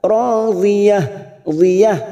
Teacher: Dhiyah ujungnya kita rem tak marbutoh kita baca ha · Ro fathah bertemu alif 2 harokat.